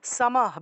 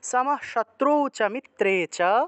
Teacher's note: তারপরে দেখুন 18, সামাহ, বিসর্গ থাকায় হ উচ্চারণ, হটা অর্ধেক উচ্চারণ হবে যেহেতু লাইনের মাঝখানে বিসর্গ আছে